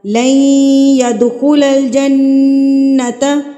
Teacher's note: ہم یہاں پر ادغام جو ہے وہ غنہ کے ساتھ کریں گے